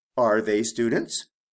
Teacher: notice that with the question my intonation goes up at the end of the question